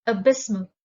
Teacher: The stress is on the second syllable, abysmal.